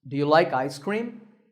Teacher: my voice goes up at the end. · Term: rising tone